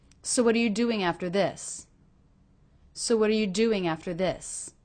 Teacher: Do you hear how the syllable do sticks out of that phrase more than anything else?